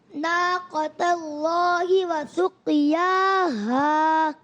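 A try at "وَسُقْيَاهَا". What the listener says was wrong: وسقیاها میں قلقلہ ادا کریں، قاف کو پر بھی رکھیں.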